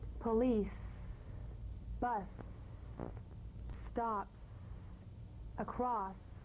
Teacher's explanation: the S is like the Z except it's unvoiced so it's the same tongue placement as the Z the Z the S is like a gentle escape of steam